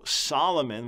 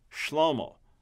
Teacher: Hebrew names that come by way of Greek, Latin into English, that we end up with an S instead of an SH